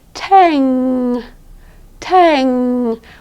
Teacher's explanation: All the sound should be up here in your nose. You should be able to feel it. You should be able to touch your nose and feel that vibration. · for the NG, what you're going to be doing with your tongue is it won't be going up anywhere.